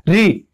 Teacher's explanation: ऋषि वाला जो री है वो मसूड़े के पास से बोला जाता है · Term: मूर्धन्य री